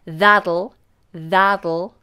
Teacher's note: Now what you'll notice is the final T becomes like a D.